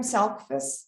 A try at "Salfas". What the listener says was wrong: The C is silent.